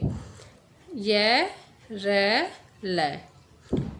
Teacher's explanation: य को बोलते हुए जिह्वा जो है वो तालु को छू रही है, रे के समय मूर्धा को और लय के समय दंत को